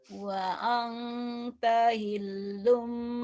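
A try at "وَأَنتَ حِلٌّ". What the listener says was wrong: kurang nyamber. Wa anta hillum gitu, nyamber.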